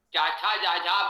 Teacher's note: चाछा जाझा बोलेंगे तो जिह्वा तालु को स्पर्श करेगी। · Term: च वर्ग